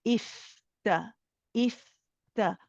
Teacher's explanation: The fa is longer. You can let it run, and it's airy. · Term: rakhawa letter